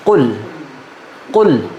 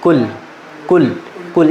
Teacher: اس کو کل نہیں پڑھنا، قل موٹا منہ بھر کے · لفظ قاف یہ کیا ہے، بہت موٹا بھی ہے اور اونچا بھی ہے